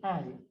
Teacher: And I is what we call a diphthong. Got two different sounds to put together. It's got an ah and an e. That just kind of go together really quickly.